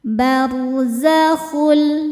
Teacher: Ro sukun dibaca secara tafkhim sebab harakat huruf sebelumnya fathah. Cara membacanya ro ditebalkan barzakhul.